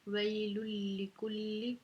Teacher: ये लाम के ऊपर तशदीद है तो तशदीद वाले हर्फ को हम दो दफ़ा पढ़ेंगे, ये दोनों लाम इकट्ठे आ रहे हैं।